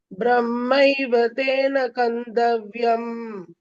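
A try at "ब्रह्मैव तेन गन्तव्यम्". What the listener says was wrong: கந்தல த போடாதீங்க, கந்தவ்யம்.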